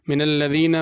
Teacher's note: من الذین میں ذال ہے، من الذین زا کر کے نہیں پڑھنی